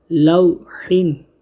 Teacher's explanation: لو، لام واو زبر لو، حا 2 زیر حن، لوحن، یہاں واولین ہو رہا ہے، واو ساکن سے پہلے زبر ہو تو واولین ہوگا، تو حرف لین کو ہم کھینچیں گے نہیں